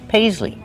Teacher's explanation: And the long E like green beans at the end.